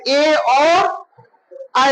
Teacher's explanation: तो कंठ और तालु से क्या निकलता है? ए और ऐ निकलता है